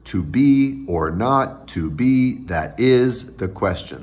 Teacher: those are five iambs in a row and i am being two syllables where the stress is on the second syllable at the end of that actually there's a troche that is